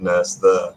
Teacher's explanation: Some speakers merge both words to the nurse end of the spectrum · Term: nurse there merger